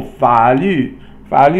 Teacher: Fa is third tone and Lu is fourth tone.